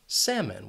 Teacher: And the reason why this word is commonly mispronounced is because of that L. This is a silent L, so you can forget about it, get rid of it when you're saying the word